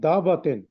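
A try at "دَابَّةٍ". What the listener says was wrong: دابت، دا کا لمبا کریں نا، لمبا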